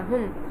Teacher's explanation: হুম শুধু হুম, কিছু টান হবে না, হুম, কারণ মিম সাকিনের ইজহার, এটা স্পষ্ট করে পড়তে হয়। মিম সাকিনের পরে যদি বা মিম ব্যতীত অন্য হরফ আসে তাহলে ওই মিম সাকিনকে স্পষ্ট করে পড়তে হয়।